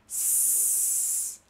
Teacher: O S é bem sutil, não vibra nada. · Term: desvozeado